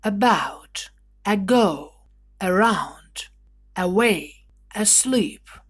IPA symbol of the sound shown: ə